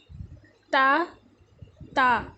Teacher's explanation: تا زبان کی نوک سے